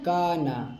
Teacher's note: یہاں پہ الف باریک ہے اس لیے کہ الف سے پہلے باریک حرف ہے